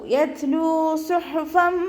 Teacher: ലാമിൻ്റെ കൂടെ വൗമദ് വന്നു, 2 കൗണ്ട് നീട്ടിക്കൊടുക്കുക. സ്വാദ് ഇസ്തിഅലാൻ്റെ ലെറ്ററാണ്, നല്ലോണം ഉയർത്തിയിട്ട് ഉച്ചരിക്കുക കേട്ടോ.